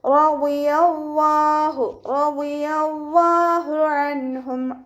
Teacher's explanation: വാദ് ഇസ്തിഅലാൻ്റെ ലെറ്ററാണ്, അപ്പോൾ തന്നെ നല്ലോണം ഉയർത്തിയിട്ട് ഉച്ചരിക്കുക.